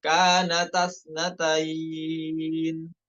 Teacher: Pada kata kanata, di situ alifnya tidak dibaca, hilang ya. Dalam keadaan wasol, namun keadaan waqaf boleh dibaca kanata.